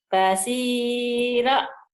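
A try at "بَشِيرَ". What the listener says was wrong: Ro-nya panjang katanya tadi. Shinnya gede. Basyiro. Basyiro. Basyiro.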